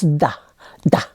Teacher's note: they don't pronounce th so instead of the is d